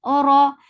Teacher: Ni, then it is two counts long. Ora, ra is heavy with little vibration.